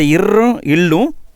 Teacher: மேல்வாயை நாக்கின் நுனி தடவுவதால் உருவாகிறது. இந்த 2 எழுத்துக்களும், இந்த இர் அப்படிங்கிறதும் இல் அப்படிங்கிறதும் மேல்வாயை நாக்குடைய நுனி தடவுவதால் உருவாகிறது.